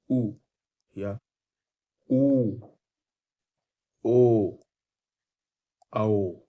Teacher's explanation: जिनका उच्चारण में होठ का आकार लगभग वृत्ताकार हो जाता है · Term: वृत मुखी